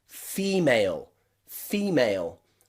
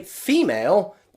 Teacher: the stressed syllable is the first part of that word fee and you can see the letter e there that's the stressed